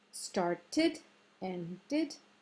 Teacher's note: There are some verbs ending in a D or a T, and then we add a tiny little I, a short I sort of.